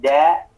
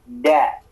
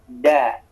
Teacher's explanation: kepala lidah disentuhkan ke gusi